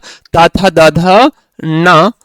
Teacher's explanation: इनका उच्चारण स्थान कहां से होगा दंत से होगा